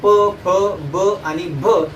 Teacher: प फ ब आणि भ हे जे वर्ण आहेत, या वर्णाचा उच्चार करताना ओठाचा संपर्क येतो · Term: ओष्ठवर्ण